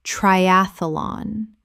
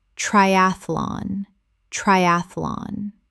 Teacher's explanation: Three syllables in natural speech. The middle syllable collapses.